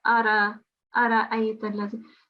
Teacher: Okay, just before we continue here, you made a ra mushaddad here. We are not having a mushaddad on the ra. It's just as plain a fatha. So it's ara ayta allazi.